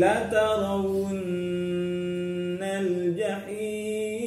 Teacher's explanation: nun tasdid ya, gunnah musyaddadah, harus dengung, panjang dengungnya, boleh 2 boleh 3